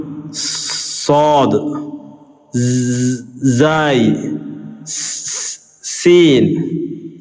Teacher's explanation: നാവിൻ്റെ തലയുടെയും ഇരുവരി പല്ലുകളുടെയും ഇട. നാവിൻ്റെ തലയും അതുപോലെ 2 വരിയിലെ പല്ലുകളുടെ ഇടഭാഗവുമാണ്.